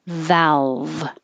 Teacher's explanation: i'm making my v top teeth on bottom lip